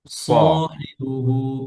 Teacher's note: স না তীক্ষ্ণ হয় সফির হয়